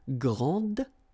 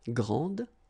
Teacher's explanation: And regarding the feminine form, you will pronounce it grande. Okay, don't insist on the final E, but then pronounce this D